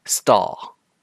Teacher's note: Now say the word stall. You shouldn't feel a puff of air coming out when you say the T sound in stall.